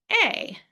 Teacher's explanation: Especially for this sound because it has really two mouth positions that happen very quickly. And so you're gonna start with that a sound with your mouth open just a little bit and your lips kind of pulled back. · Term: long a sound